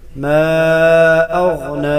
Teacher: ما اغنا، ما اف مدہ ہے اور آگے حمزہ ہے تو اس کو مد منفصل جائز کہتے ہیں. ما اغنا تین الف کے برابر کھینچ کر پڑھا جائے گا. ما اغنا، غین کو گلے کے وسط سے ادا کریں گے جو منہ کی طرف ہے.